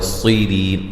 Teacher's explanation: صاد کو موٹا ادا کریں گے، ری یا مدہ ہے، وقفاً بڑی مد کے ساتھ پڑھ سکتے ہیں۔